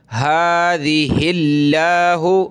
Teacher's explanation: لفظ اللہ سے پہلے ہا پر زیر ہے تو لفظ اللہ کو پتلا کریں گے باریک